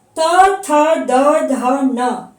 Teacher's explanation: जब हम तवर्ग का उच्चारण करते हैं तो हमारी जीभ जो है वो दांत को स्पर्श करती है। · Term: दंत वर्ण